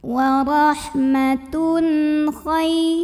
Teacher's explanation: tanwin ini dibaca dengan idhar atau jelas bunyi N-nya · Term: idhar halqi